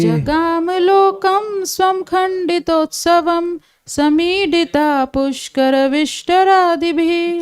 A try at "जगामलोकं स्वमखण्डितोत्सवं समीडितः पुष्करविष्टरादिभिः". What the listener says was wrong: देखिए स्वम बोलना पड़ेगा आपको, स्वमखण्डितोत्सवम आएगा। जगामलोकं स्वमखण्डितोत्सवं समीडितः पुष्करविष्टरादिभिः। जगामलोकं स्वमखण्डितोत्सवं समीडितः पुष्करविष्टरादिभिः।